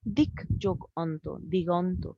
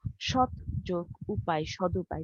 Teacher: পূর্ববর্তী অঘোষ ধ্বনি থাকে ওগুলো হচ্ছে ঘোষ ধ্বনিতে পরিণত হয়ে যায়।